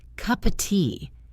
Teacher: We don't say cup of tea loudly and clearly. The word of becomes just a tiny sound. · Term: weak forms